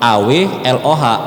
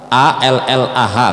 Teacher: Karena dia tuh nyebut AWLOH, Allah, salah, yang benar ALLAH kan, Allah. Lidah kita tuh naik semua langsung ke langit-langit, makanya dia disebut tebal itu.